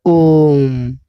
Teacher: प्लतु स्वर जिसमें ह्रस्व का 3 गुना समय लगे उसे हम प्लतु कहते हैं